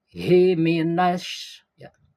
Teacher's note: Hi minasy itu shin besar memiliki sifat tapasy ya, jadi udara keluar.